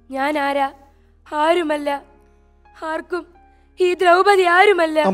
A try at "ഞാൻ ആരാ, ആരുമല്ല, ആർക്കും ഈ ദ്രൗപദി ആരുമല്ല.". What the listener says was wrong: എന്നിട്ട് പതുക്കെ പറ. ഞാൻ ആരാ, ഞാൻ ആരുമല്ല, അതൊന്ന് പതുക്കെ പറ, പതുക്കെ. പുഷിയാതെ, പുഷിയാതെ. ഇനിയും താഴാം കേട്ടോ, എണീക്കും, എണീക്കും, ഇനിയും താഴാം മോളെ. ഇത്രയൊന്നും വേണ്ട.